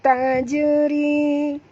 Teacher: Okey, jim ini mati di tengah-tengah kalimah, ada tanda mati tu, maka kita kena lantunkan dia qalqalah sughra kerana huruf jim termasuk dalam huruf qalqalah qaf ta ba jim dal, huruf yang keempat ya. Ri di sini ra tarqi tipis, jangan tebal ya, kerana ra baris bawah 2 harakat ma asli.